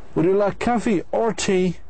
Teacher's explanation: So the first time your voice goes up, and the second it goes down. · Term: either or question